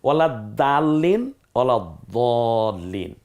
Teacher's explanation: দালটা বলার সময় একটু পাতলা হবে উচ্চারণটা হালকা হবে দটা বলার সময় মুখটা একটু গলাবে